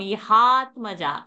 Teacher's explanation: this is an example where dirgha sound is there, conjunct is there, dvitva is not happening. Only when a hasva sound, short sound is there, that time only that dvitva will happen.